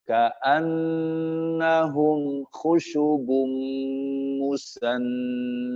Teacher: Ka'annahum ada gunnahnya tapi hanya satu ketukan